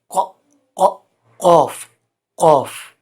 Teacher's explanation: لہات کے ساتھ جو زبان کی جڑ جڑی ہوئی ہے، وہ جب اوپر کے تالو سے ٹکر کھاتی ہے تو قاف ادا ہوتا ہے، قوف قوف۔ تو مخرج نمبر 5 ہے لہات قوف کا۔